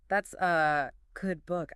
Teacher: If you say it in isolation, reading it off a flashcard, it's a strong, clear A. But in a flowing sentence, it almost always reduces to a schwa.